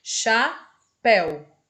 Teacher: Então, o E e o U ficam na mesma sílaba. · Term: ditongo decrescente